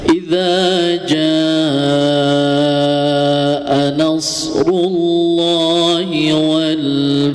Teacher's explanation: lafaz jaa ya, hukumnya mad wajib muttasil ya, itu panjangnya 4 sampai 5 harokat.